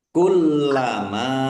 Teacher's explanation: dibaca double lamnya ada tasdidnya, ditekan dan ditahan biar tampak doublenya